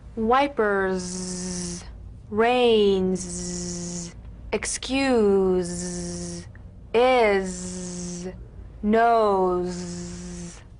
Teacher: feel a smooth strong vibration in the teeth and in the front of the tongue · the Z vibrates in that very small open space between the tongue and the upper teeth